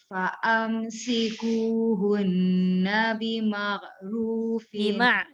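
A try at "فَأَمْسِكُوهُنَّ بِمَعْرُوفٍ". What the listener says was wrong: Jangan bima'. Nanti dia jadi ghain. Fa'amsikuhunna bima'ruf.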